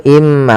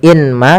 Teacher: Kemudian pada lafal immahin di sini ada bacaan idgham ghunah lagi yaitu adanya tanwin bertemu dengan huruf mim. Maka cara bacanya masukkan ke huruf mim yaitu imma. Bukan lagi inma tapi imma sambil ditahan gunahnya dua harakat. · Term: idgham bi gunnah